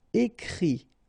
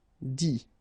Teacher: phonetically you pronounce i because final t is not pronounced